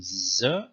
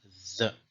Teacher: This one represented two separate consonantal phonemes, namely z and the interdental the.